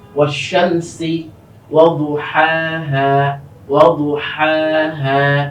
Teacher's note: এখানে একই সাথে গলার মধ্যখান থেকে যে হা, গলার শুরু থেকে যে হা, কণ্ঠনালীর দুটোটা কিন্তু একসাথে এসেছে।